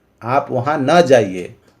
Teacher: लेकिन एक आज्ञा सूचक वाक्य ऐसा होता है जो निषेध को सूचित करता है, उसका जो अनुतान सांचा है वो 2, 3, 1 का होता है और वाक्यांत में अवरोही सुर होता है। अवरोही अर्थात निम्न सुर होता है।